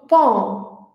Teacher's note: o som com o lábio mais relaxado, arredondado, relaxado e aberto